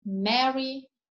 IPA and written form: ˈmeri (merry)